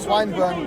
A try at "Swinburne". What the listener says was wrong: It's called Swinburne. No, when you say swine, it sounds a little weird.